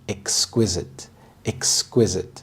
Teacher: The stress is on the second syllable, exquisite. This means extremely beautiful and delicate.